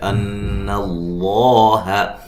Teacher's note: کے بعد حمزہ دوسرے کلمہ کے شروع میں ہے، ان اللہ، نون مشدد پہ غنہ ضروری ہے